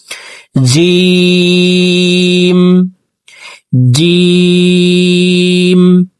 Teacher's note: জিহ্বার মধ্যখান থেকে জিম হরফের সঠিকভাবে উচ্চারণ করব